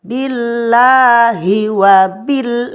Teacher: Ini lamnya terbaca jelas, termasuk dalam hukum al-ta'rif. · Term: izhar qamariyah